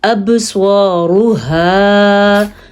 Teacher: با پہ ہم نے قلقلہ کیا ہے کیونکہ قاف طا با جیم دال ان حروف کے اوپر جب ساکن آ جائے تو وہاں پہ قلقلہ پیدا ہوتا ہے